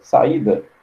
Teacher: sequência de duas vogais numa mesma palavra que pertencem a sílabas diferentes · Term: hiato